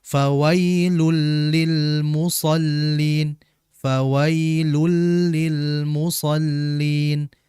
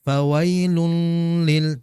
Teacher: Maka kita harus membaca dengan memasukkan huruf yang kedua tanpa ghunah. Jadi, jangan ditahan terlalu lama. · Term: idgham bila bila ghunah, idgham bila gunnah